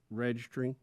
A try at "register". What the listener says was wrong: Got a D dropped in there somewhere. Register.